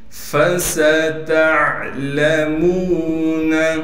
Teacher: فا کو صاف کر کے پڑھنا ہے، سین میں سیٹی نکالیں گے۔ اسی طریقے سے تا کو عین سے ملائیں گے اس لیے کہ عین ساکن ہے۔